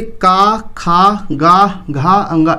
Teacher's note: का, खा, गा, घा, अंगा, इसका उच्चारण स्थान क्या है? तो इसका उच्चारण स्थान है कंठ। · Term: कंठ वर्णों